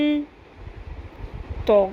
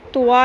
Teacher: منہ بہت زیادہ نہیں کھولنا، اور واو کی ساؤنڈ نہیں آنی چاہیے